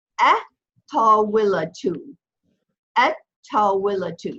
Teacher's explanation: Ta is also a sun letter. So when you pronounce it, you're not going to hear the L of the Aleph Lam.